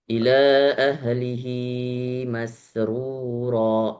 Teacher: Kurang panjang, hi-nya dimaksimalkan lagi 2 harokat